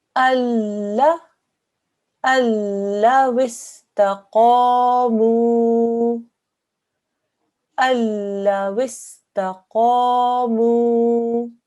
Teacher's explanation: The Noon is there, written, but when you read it, you don't read the Noon at all.